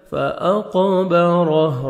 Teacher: را کو مرزبر ہے، را کو موٹا کر کے پڑھیں گے، ہا جب وقف کریں گے ہا ساکن ہو جائے گا، را زبر ہے جزم رہ. · قاف حروف قلقلہ میں سے ڈبل ساؤنڈ آئے گا